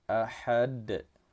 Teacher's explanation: Huruf dal terletak di akhir kata, kita pantulkan cara membacanya. Nama hukum tajwidnya ialah qalqalah kubra.